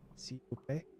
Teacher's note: If I actually try, like, s'il vous plaît, I don't know if that was good or not. I think the last syllable, like the last vowel, sounded American in my ears